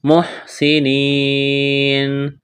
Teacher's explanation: یا مدہ ہے، ایک الف کے برابر کھینچنا ہے، وقف کریں گے، نون کو ساکن کریں گے، اس آیت کو مکمل پڑھتے ہیں۔